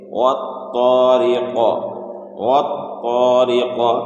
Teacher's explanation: تو جب یہاں وقف کریں گے والطارق میں تو قاف ساکن ہو جائے گا، اور یہ قاف حروف قلقلہ میں سے ہے تو اس لیے یہاں پر قلقلہ ہوگا، یعنی قاف اپنے مخرج سے ٹکر کھا کر الگ ہو جائے گا